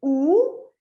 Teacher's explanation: j'ai une labialisation extrême où j'ai une toute petite bouche toute ronde là où je vraiment je fais une toute petite bouche bien